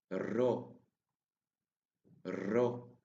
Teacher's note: The sound of ro is a little bit different than in English. We have to roll the R, just like in Spanish